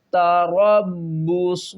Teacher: را کو با کے ساتھ ملائیں گے، سختی کریں گے